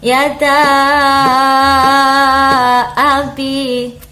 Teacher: Jadi yada ada mad bertemu dengan abi, bertemu dengan huruf alif. Panjangnya adalah 6 harokat. Jadi 3 alif atau 6 harokat. Cara bacanya 6 ketuk. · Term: mad jaiz munfasil